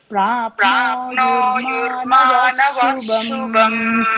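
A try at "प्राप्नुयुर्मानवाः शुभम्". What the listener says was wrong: ವಾ ದೀರ್ಘ ಇದೆ. ವಃ ಶುಭಂ ಅಲ್ಲ, ವಾ ಶುಭಂ. ವಾ ದೀರ್ಘ ಇದೆ.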